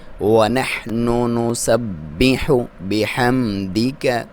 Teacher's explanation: میم کا اظہار ہوگا، کلیئر پڑھیں گے، حرکت نہیں کریں گے